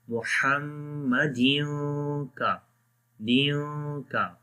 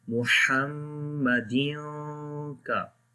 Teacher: So when pink color come, we make ikhfa sound, like we hide the sound of noon or tanween into nose